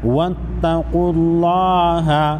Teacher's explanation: लफ्ज़ अल्लाह से पहले पेश है। लफ्ज़ अल्लाह को मोटा पढ़ेंगे